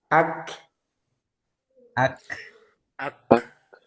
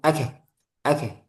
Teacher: Jadi dikuatkan dulu. Ak baru dilepas, sisanya itu hamas. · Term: syiddah